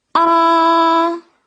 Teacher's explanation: 第一声是阴平声，又高又平